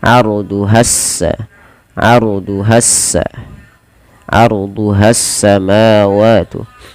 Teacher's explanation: Di sini harusnya ada alif lam syamsiyah, yang dimana alif lam tertulis tapi tidak dibaca, sehingga langsung arduhas